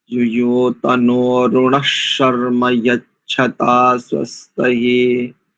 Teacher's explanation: इसमें संहिता की दृष्टि से युयो तनो ऋणः शर्म यच्छता स्वस्तये यानी विसर्ग को अर्ध शकार, तालव्य शकार ही यहाँ पर कर सकते